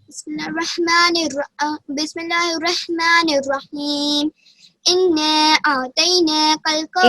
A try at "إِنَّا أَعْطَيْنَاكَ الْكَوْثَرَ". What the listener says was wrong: انا میں غنہ کریں گے. پہلے انا میں غنہ کیا جائے گا. नाक से जो साउंड आता है, जो आवाज आती है, उसे गुन्ना कहा जाता है। सिर्फ साकिन नहीं, नून में और मीम में।